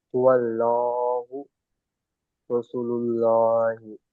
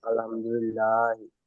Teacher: আল্লাহ শব্দের লামের পূর্বে যাবার বা পেশ হলে পুর হয়, আর আল্লাহ শব্দের লামের পূর্বে জের হলে বারিক হয়।